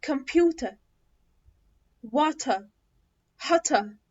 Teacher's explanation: أما في الأمريكان لأ، إحنا بننطقه بقوة. حرف الار في البريتش اكسنت انا ما بنطقهاش